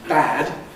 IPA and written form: bæd (bad)